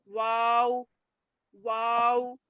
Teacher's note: ये दोनों होठों को गोल करने से अदा होता है। देखो पिक्चर में भी बता रहे, मिलाना नहीं है, कुछ नहीं है, सिर्फ दोनों होठों को गोल कर देना है।